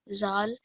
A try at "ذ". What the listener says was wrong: When we say this letter, which is dhal, we don't want to make a z sound, not a buzzing sound. There shouldn't be a z sound in there. So you see how you say that sort of th sound?